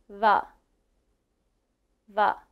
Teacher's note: when I say the sound V, my teeth touch my bottom lip